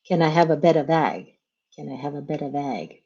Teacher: Every syllable starts with a consonant sound. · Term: connected